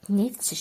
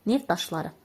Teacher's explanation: Bunun tələffüzü də belə olacaq. T düşür. Çünki özündən sonra samitlə söz gəlib.